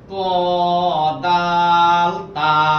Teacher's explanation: এই তিনটা হরফ জিব্বার আগা সামনের উপরে দুই দাঁতের গোড়ার সঙ্গে লাগাইয়া